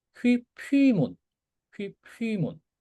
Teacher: 이 피는 숨소리가 붙은 피잖아. 그러니까 이렇게 써야지 라고 해서 자연스럽게 바꿔주는 겁니다.